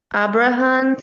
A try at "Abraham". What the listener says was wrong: Your pronunciation of of the the main man is a little more Portuguese than English. I think is it Abra? It's Abraham in English. A big open A.